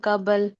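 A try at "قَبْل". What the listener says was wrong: बा को भी साकिन करेंगे कबल कहेंगे तो बा के ऊपर जबर हो गई ना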